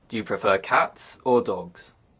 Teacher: in contrasting questions the intonation Rises then Falls